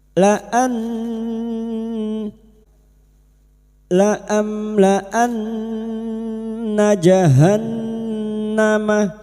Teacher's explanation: Laan nun yang bertasdid ghunna musyaddadah. Kita dengungkan selama tiga harakat.